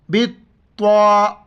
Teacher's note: با کو طا کے ساتھ ملاتے وقت سختی سے پڑھیں گے، طا کے اوپر شد ہیں